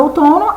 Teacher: na nossa última palavra, outono, a sílaba que eu falo mais forte é o to, ou seja, ela é a sílaba mais forte. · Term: sílaba tônica